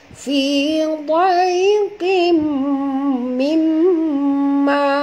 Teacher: Mimma, okey, sini ada, sini ialah idgham al-gunnah, tanwin bertemu dengan mim, kita kena sembunyi, kena masukkan bunyi tanwin ini ke dalam mim disertai dengung dua harakat ya, tu idgham al-gunnah.